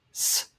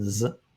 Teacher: So you have sigma and zeta, s and z. Again, one is voiceless and the other is voiced.